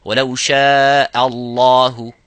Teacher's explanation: Similarly, the last example, وَلَوْ شَاءَ اللَّهُ and ha, both of these letters, this hamza and the ha, have to be muraqqaq, which is empty mouth. So only the lafzul jalala have to be full mouth. · only the lafzul jalala have to be full mouth. وَلَوْ شَاءَ, not وَلَوْ شَاءَ Allah, وَلَوْ شَاءَ اللَّهُ.